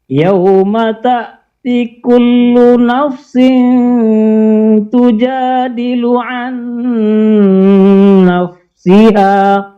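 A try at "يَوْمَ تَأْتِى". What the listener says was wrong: Artinya panjangkan ta'ti.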